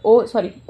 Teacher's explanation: तो ओष्ठ था तो कंठ और ओष्ठ, तो इनका ओ का उच्चारण स्थान है कंठ और ओष्ठ है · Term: कंठोष्ठ